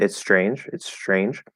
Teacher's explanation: as we start transitioning to that ch we'll actually let that sh start coming through before we close the t so it's not that there's an sh and then the t